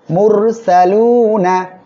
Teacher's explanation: মিম আসছে গুন্নার সাথে মিলিয়ে পড়বেন ইলাই মিম র পেশ মুর র সাকিন তার ডাইনে পেশ আসছে মোটা করে পড়তে হবে সিন জবর সা লাম পেশ লু এক আলিফ টান নুন জবর